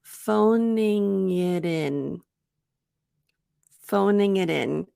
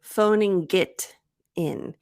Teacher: to the subtlety of natural speech so phoning it's ing but the G stops in your throat it doesn't come out of your mouth like g g so phoning and because it stops there that's the placement of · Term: double link